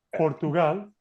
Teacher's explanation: you don't need to make any air to come through when you pronounce your P's in Spanish